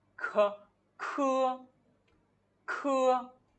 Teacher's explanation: Khi trong tiếng Việt ví dụ mình nói từ khờ khạo nó khá là nhẹ nhàng, nhưng ở trong tiếng Trung mình khi mình cần phải bật hơi ra là khờ khạo, đó, khờ khạo. Thì trong này nó sẽ có sự bật hơi mạnh hơn một chút và cái hơi của nó ra khá là đầy.